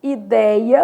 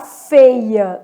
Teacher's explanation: Aberto, som de acento agudo, vou colocar lá, por exemplo, ideia, perdeu o acento, mas o som é aberto.